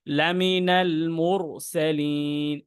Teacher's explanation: র সাকিনের পূর্বে পেশ আসছে, সেজন্য ওই র সাকিনটা মোটা হয়েছে।